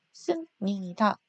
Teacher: 비읍과 니은이 나란히 만나서 비읍이 니은을 닮아서 미음으로 변하는 비음화 현상 일어났어요